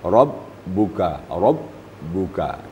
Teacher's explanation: ketiga di situ ada rabbuka ba musyaddadah ba bertasdik ba musyaddadah ba itu sifatnya adalah syiddah syiddah ertinya terputus suara terputus · Ba musyaddadah, ba itu sifatnya adalah syiddah. Syiddah artinya terputus. Suara terputus apabila bertemu dengan ba. Apabila dia bertasdid, apalagi apabila dia sukun.